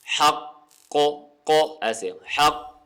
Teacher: اگر ہم اس کے اوپر وقف کریں گے تو وقف کرنے کی وجہ سے قوف پر بھی ہوگا اور اس کے اوپر قلقلہ ہوگا. قلقلہ کا معنی ہوتا ہے ہلانا، یعنی حرف کی آواز تھوڑی سی ہلے.